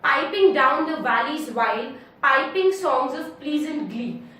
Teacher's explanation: we'll find that each line has a strong syllable followed by a weak syllable. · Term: trochaic tetrameter